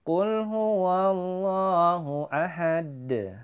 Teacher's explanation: huruf dal di akhir ayat atau waqaf. Maka huruf dal tersebut kita pantulkan karena dal termasuk salah satu huruf qalqalah.